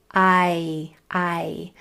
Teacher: We've learned that when we're reading an I and we can see that there's another vowel 1 or 2 doors down, we know that that I is going to say its name and say I. That long sound I is a diphthong, which means the sound changes from the front to the back of it, from the top to the bottom of it. Your mouth changes shape.